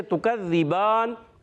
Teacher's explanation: اب تا ادا ہوتا ہے زبان کا سرا اوپر کے دانتوں کی جڑوں سے